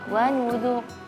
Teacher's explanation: Walaupun ra-nya tebal di situ benar, tapi nun dzalnya tipis ya.